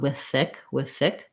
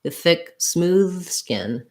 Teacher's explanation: You can almost just do one TH sound